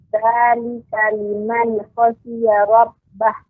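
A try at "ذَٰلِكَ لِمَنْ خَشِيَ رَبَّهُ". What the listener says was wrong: Iya, bagus Ibu bacaannya ya, walaupun ada sedikit yang perlu menjadi catatan, termasuk nun ya. Benar-benar kita memantapkan pengucapan nun sehingga tidak memantul. Ya, dzalika liman khasyiya rabbah. Jadi memang harus dilatih lagi Ibu agar lidahnya tidak kadang mengucapkan huruf yang sukun menjadi memantul begitu.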